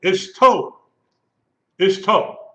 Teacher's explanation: The accent is on the last syllable.